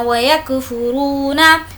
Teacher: वाव मद्दा खींच कर पढ़ेंगे